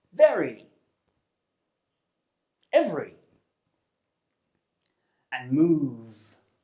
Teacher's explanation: This means that you create friction between the bottom lip and the top teeth. The V sound is made through the mouth and it's voiced, which means that you produce the sound by vibrating the vocal cords. It's defined by the position of your lips and teeth. · The V sound is a sound from the consonant pairs group, and it's called the voiced labiodental fricative. This means that you create friction between the bottom lip and the top teeth.